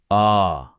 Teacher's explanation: विवृत, जिसमें मुंह पूरा खुल जाता है